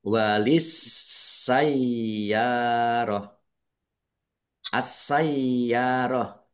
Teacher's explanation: Alif lam syamsiyah karena tidak dibaca. Langsung masuk ke huruf berikutnya yaitu sin. Ditandai sin-nya ada tasdidnya sin-nya dibaca dobel.